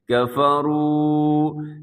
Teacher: واو ساکن سے پہلے پیش ہو واو مدہ کہتے ہیں، اس کو اپنے لمبا کرنا ہے